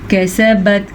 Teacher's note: کاف کو نرمی سے پڑھنا ہے کیونکہ کاف تو باریک ہے، کاف زبر کا سین زبر سا، کیسا با زبر تبت، کسبت اس سے زیادہ لمبا کوئی بھی حرف نہیں ہو سکتا۔